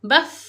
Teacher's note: Rokhawah ni maknanya ada lagi suara kita bila mana kita sukunkan fa. Dan yang terakhir, huruf fa ini bila mana kita nak sebut huruf fa, kita kena rendahkan suara kita.